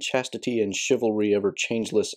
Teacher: although I pronounced the chivalry like sh, so maybe that should have been a ch as well.